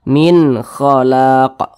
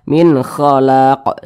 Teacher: Kemudian huruf qaf ini karena dia sukun ya dipantulkan. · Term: qalqalah kubra